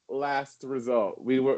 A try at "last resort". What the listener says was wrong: It's pronounced last resort, not last result.